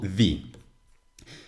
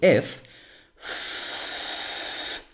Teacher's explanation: those are actually my vocal cords vibrating to make this sound if on the other hand I make the sound of f I don't feel any vibration in my throat because my vocal cords are not vibrating